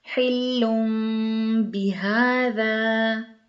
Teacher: بھی تنوین کے بعد دو پیش کے بعد با ہے تو نون بالکل ادا نہیں ہوگا، ناک میں آواز جائے گی، غنہ ہوگا اور میم ادا ہوگا